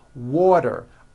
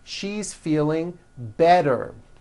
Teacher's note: the t turns into a D and the whole word is voiced · if a letter T falls between two vowel sounds which are voiced so if it falls in the middle of vowels then the tea is pronounced as a D and the whole word is voiced this is very easy and